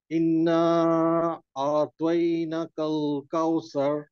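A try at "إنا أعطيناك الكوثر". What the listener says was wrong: আচ্ছা, এই নাতেও টান হবে। আবার বলেন।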